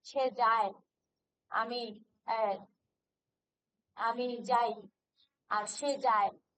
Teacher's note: অন্তস্থ অ, এটাকে বলা হয় পিচ্ছিল ধ্বনি বা পিচ্ছিল স্বর। অন্তস্থ অ যেখানে থাকে সেখানে স্বরটা একটু পিছলে যায়।